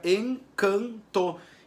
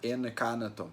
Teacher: na palavra encanto, por exemplo, eu não tenho o som da consoante N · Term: dígrafo vocálico